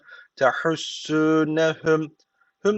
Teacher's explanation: hüm diye kapatıyoruz dudağı bir Elif miktar tutuyoruz sonra B diye açıyoruz bu şekilde bu şekilde duracağız son harf cezim oluyor diye duruyoruz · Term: dudak ihfası